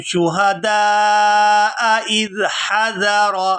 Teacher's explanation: یہاں پر دو حمزہ قطعی اکٹھے آ گئے ہیں تو ان کو خوب واضح کر کے ادا کریں گے